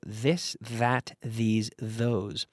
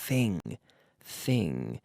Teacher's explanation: there's a difference between a hard th sound and a soft th sound whether the vocal cords are activated or not